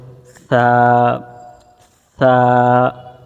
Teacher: ছা উচ্চারণের সময় নরম বাতাস আসবে এবং সামনের দাঁতের সাথে জিব্বার গোড়া লাগবে